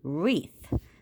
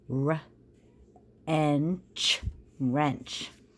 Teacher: When we have the W and the R together, we don't hear the W sound. So if you look up here at our word bank, WR, we're just going to read it as R, right? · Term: silent W